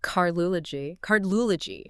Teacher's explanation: >> So, if you take the word root cardi and you want to add the suffix -ology, which means the study of, you are forcing the i or the d to crash straight into the l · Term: consonant clusters